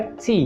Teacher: Há uma pequena explosão aqui feita quando você encosta a língua no céu da boca para produzir o som. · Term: som explosivo